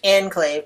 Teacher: says Enclave with a long syllable on the second syllable and in English we stress that on the first syllable